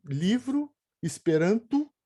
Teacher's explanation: a gente fala o nosso O final com U